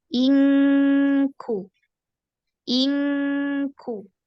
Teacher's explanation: Adapun pada huruf kaf itu karena karena makhrajnya tertutup dengan sempurna, ditempel dengan sempurna ya. Kalau ikhfa pada kaf, maka suara itu semua dia mengalir ke hidung karena makhrajnya tertutup dengan sempurna.